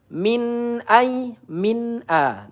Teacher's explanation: nun sukun bertemu alif izhar halki. Kita baca dengan jelas ya, tidak boleh didengungkan